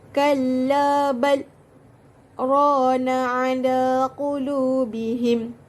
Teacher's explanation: perlu berhenti sekejap dan tahan nafas selama 2 harakat, kemudian sambung tanpa mengambil nafas baharu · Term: saktah